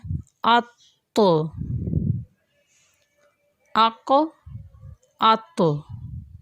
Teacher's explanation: کیونکہ یہ حروف قلقلہ ہیں، ان کی آواز میں جنبش سی پیدا ہو رہی ہے